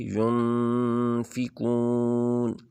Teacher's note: نون کو چھپا کے پڑھنا ہے، یعنی نون کو تھوڑا سا لمبا کریں گے، ناک سے آواز ادا ہوگی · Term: اخفاء